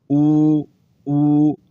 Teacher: لمبا کرنا ہے کیونکہ واو ساکن سے پہلے پیش آ گئی واو مد ہے